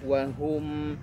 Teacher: huruf mim punya sifat tawassut diantaranya. Berikan hak tawassutnya, mengalir sedikit.